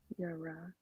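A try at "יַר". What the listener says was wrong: Not if it's joined. Yar. Yar.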